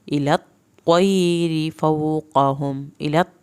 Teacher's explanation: इलत, त्वा की शद अदा करें